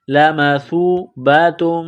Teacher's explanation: سا کو پڑھتے وقت زبان تھوڑی سی باہر نکالیں گے، سا کو واو کے ساتھ ملانا ہے۔ · لمثوبۃ من تا کو میم کے ساتھ ملانا ہے، میم مشدد ہے، غنہ کریں گے